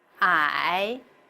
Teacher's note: The third tone is first down and then up.